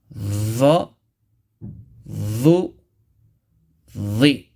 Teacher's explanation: With the tip of the tongue touching softly the edges of thanaya ulya.